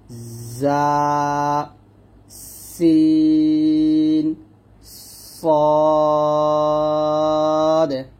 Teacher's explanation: তারপর হচ্ছে 12 নং মাখরাজ হলো জিহ্বার আগা সামনে নিচে দুই দাঁতের পেট ও আগার সঙ্গে লাগিয়ে উচ্চারিত হয় জা সিন সদ। এখানে জা এবং সিন দুটা পাতলা আর সদটা মোটা করে উচ্চারণ করতে হবে। আর তিনটা সফির মানে তিনটা হরফ উচ্চারণ করার সময় একটা শব্দ আসবে এরকম জা সিন সদ এরকম ভাবে।